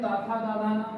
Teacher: अगर ता का उच्चारण स्थान दंत है तो था, दा और धा का उच्चारण स्थान भी दंत होगा, और ना का उच्चारण स्थान क्या होगा, ये होगा दंत नासिक।